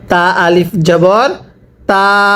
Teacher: জবরের পরে খালি আলিফ হলে এক আলিফ টানিয়া পড়তে হয়।